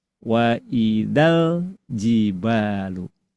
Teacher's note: Wa idza yang asalnya panjang berubah jadi pendek.